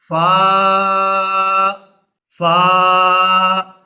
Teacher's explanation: اوپر والے دانتوں کا کنارہ اور نیچے والا ہونٹ جب ملیں گے تو فا ادا ہوگی